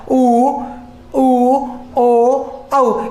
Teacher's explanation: उच्चारण में जिह्वा का पिछला भाग इन पश्च स्वरों में सक्रिय होता है